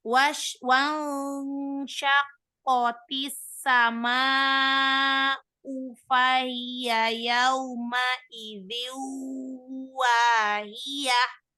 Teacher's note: Hi-nya nggak terhembus udara dengan sempurna.